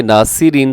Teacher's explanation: ناصرین میں صاد موٹا ہوگا, اگرچہ اس کے نیچے زیر ہے لیکن اس کے باوجود ہم اس کو موٹا رکھیں گے. ناصرین سین نہیں بنائیں گے, اس کو صاد ہی رکھیں گے. ناصرین, را جو ہے وہ بھی باریک ہے, آخر میں وقف کریں گے تو نون ساکن ہو جائے گا.